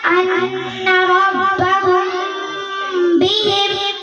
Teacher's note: number 2 اخفاء تخفیف میم ساکن کے بعد با آئے تو غنہ کے ساتھ اخفاء ہوگا